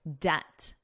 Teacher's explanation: I wrote the word debt here so it's easier to see the connection, but it's also on the second line. Now notice the B is totally silent in the word debt. You don't hear it at all.